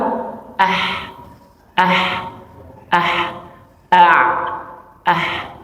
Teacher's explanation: Ain dengan ha kan satu makhraj, sama-sama di tengah tengah tenggorokan ya. Ketika misalnya kita baca ain ini yang sukun ya, terutama yang sukun ini akan naik nih a ya ini naik ya.